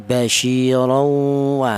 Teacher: Cara bacanya tanwin ini langsung menyatu ke huruf wawu ini. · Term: idgham